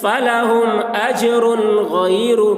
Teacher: را پیش رو، را کے اوپر پیش ہے، پیش کو جلدی پڑھیں، تھوڑا بھی نہ کھینچیں، معروف پڑھیں، مجہول آواز سے بچیں